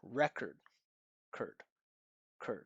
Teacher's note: Listen to that unstressed syllable. Short, flat pitch. And what you notice is only a little bit of space. cur cur cur compared to the stressed re re Look at the mouth movement I'm creating.